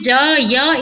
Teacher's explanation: य तालव्य वर्ण है, ज तालव्य वर्ण है, उच्चारण स्थान समान दिखाई दिए ना।